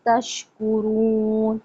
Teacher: شین پھیلا کے پڑھا جاتا ہے